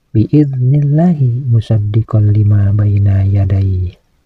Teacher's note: Kalimat Allah ini harus dibaca tarkik, yaitu dibaca tipis. Karena kalimat Allah ini didahului oleh huruf yang berbaris kasrah yaitu huruf nun.